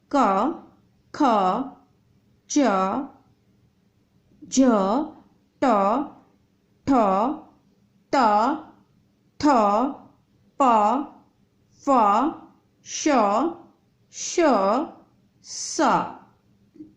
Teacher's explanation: स्वर तंत्रियों में कंपन उत्पन्न नहीं होता उसे अघोष वर्ण कहते हैं। इसमें नाद उत्पन्न नहीं होता।